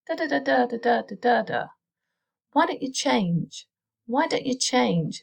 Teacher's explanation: it all gets squashed in together at the start